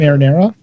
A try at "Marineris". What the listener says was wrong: No, Marineris. There is an IS at the end. It's not spaghetti, Sheldon.